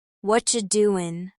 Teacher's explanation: The T in what becomes soft, almost disappears. That's what we call connected speech.